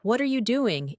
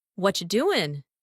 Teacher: native speakers rarely say, What are you doing? in full. Instead, it comes out like, What you doing? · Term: connected sounds